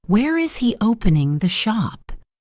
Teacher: Notice how it goes down for a wh question. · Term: intonation